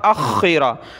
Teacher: حمزہ کو خا کے ساتھ ملانا ہے, واو کو نہیں پڑھنا. حمزہ خا زبر اخ, خا زیر خی, اخی, را زبر را, اخیرا.